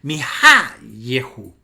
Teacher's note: la acentuación por razones de sintaxis pasa de la penúltima sílaba a la antepenúltima sílaba y ahora esa kamet, esa alarga de yak o yahu se convierte en ye.